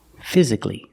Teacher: Put the stress on the first syllable.